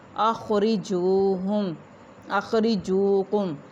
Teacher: خا جو ہے اس کو پر ادا کیا جائے گا، را کو بھی پر ادا کیا جائے گا۔ واو ساکن جیم کے اوپر پیش واو مدہ ایک الف کے برابر لمبا کریں گے۔